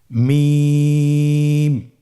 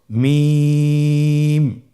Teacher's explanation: হ্যা দুই ঠোট চেপে ধরে আমরা উচ্চারণ করব।